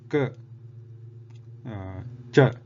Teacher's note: But when we say k, cha, these are muted. After pronouncing them, there is no resonance heard. So this Jihvamuliya and Upadhmaniya both are muted sounds or aghosha.